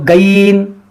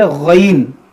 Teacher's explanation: اس کو گین یا گین نہیں پڑھنا ہے, بلکہ اس کو پڑھنا ہے موٹا کر کے غین. گاف کی طرح آواز اس میں نہ نکلے, یہ گاف نہیں ہے, یہ غین ہے.